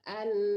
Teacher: kalau an yang pertama itu tidak dengung ya, dipercepat.